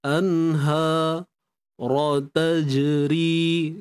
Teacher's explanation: Untuk ra bari atas sepastinya tebal